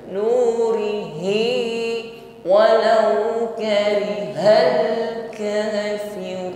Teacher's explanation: Ru fathah ataupun dhammah, maka ra-nya dibaca tafkhim, ditebalkan.